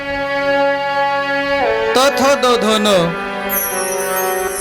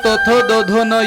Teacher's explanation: या वर्णाचा उच्चार करण्याकरता जीभ दाताला लागावी लागते किंवा जीभ दाताला अडकली पाहिजे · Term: दंत्य वर्ण